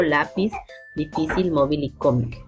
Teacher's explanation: su mayor fuerza de voz se encuentra en la penúltima sílaba, siempre y cuando no acabe ni en vocal ni en consonante N y S. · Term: palabras llanas o graves